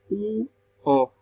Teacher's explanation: las vocales posteriores son la U y la O. ¿Por qué? Porque se forman al final de la boca